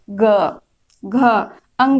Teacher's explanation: हमारे गले में कंपन हो रही है, कंठ में। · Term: सघोष व्यंजन